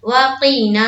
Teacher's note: ना में अलिफ मद्दा, काफ में नहीं खींचना है, वक़ीना। अब देखिए आइन के ऊपर क्या है, जबर की हरकत, इसे भी नहीं खींचेंगे, रा में एक अलिफ के बकदर खींचना है।